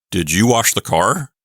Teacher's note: I could make my voice go up at the end like this. Did you wash the car?